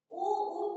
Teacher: उ का उच्चारण स्थान ओष्ठ है।